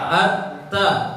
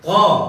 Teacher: Ujung lidah menempel di gigi belakang. At-ta. Nah, kalau to di situ juga, cuma bedanya pangkal lidah naik.